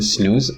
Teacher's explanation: The same is happening in snooze. Again, you're having a voiced alveolar nasal that loses its voicing due to the influence of the previous voiceless alveolar fricative sa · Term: devoiced